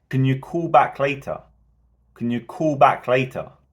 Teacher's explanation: we would expect to have three Rises here because we're asking a question if they can call back and we are saying them louder · there's a slight pause between call back later